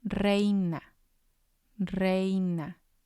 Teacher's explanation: the stress is going to be on the E because that's the strong vowel. Re, I, na.